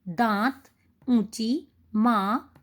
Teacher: होता है इस के रूप में इसको लिखा जाता है अनुनासिक अनुनासिक होता है चंद्र बिंदु इसका उच्चारण मुख और नासिका से होता है इसका चिन्ह चंद्र बिंदु होता है जैसे एक छोटा सा चांद